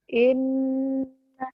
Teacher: Dengung ke hidung, gunnah dan ditahan. Bukan ditekan ya.